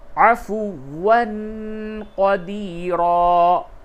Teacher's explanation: تنوین کے بعد قاف ہے، اس جگہ پہ اخفا ہوگا